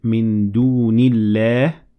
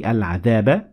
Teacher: Every time I stopped at a word, I turned the vowel or the tanween into a sukoon.